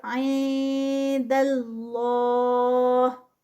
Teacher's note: دال کو پتلا ہی رکھنا ہے، دال کو موٹا نہیں کرنا. یہ اس کا کاؤنٹس 2 اسٹریچ پہ جائے گا اور یہ ہیوی ہوگا، اور ساتھ میں جب اس کو ہم روکیں گے تو 4 کاؤنٹس پہ.